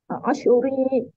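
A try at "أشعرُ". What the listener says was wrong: Ash'uru, Doma ya, mudore itu doma ujung. Ash'uru, Ash'uru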